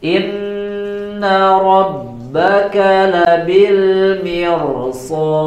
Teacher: Kemudian di huruf dalnya ya tetap dibaca tipis juga ya, karena huruf dal di akhir ya, huruf dal itu tidak termasuk huruf yang dibaca tebal. Sod, dalnya dibaca tipis, jadi tidak dibaca sodu, ya, tidak dibaca tebal, harus tetap dibaca tipis huruf dalnya.